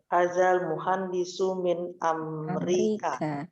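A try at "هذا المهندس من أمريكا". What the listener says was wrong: Ahsant.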